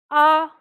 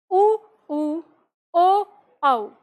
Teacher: आ हमारी जीभ आगे से शांत रहती है पीछे की जीभ का ही भाग काम करता है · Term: पश्च स्वर